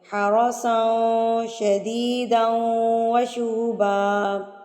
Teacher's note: را کے اوپر جب زبر آ جاتی ہے تو را پر یعنی کہ موٹا کر کے پڑھا جاتا ہے